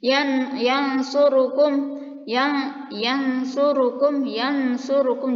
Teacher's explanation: Jadi setelah kita mengucapkan nun, lidah kita bersiap-siap untuk mengucapkan huruf selanjutnya yaitu sad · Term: ikhfa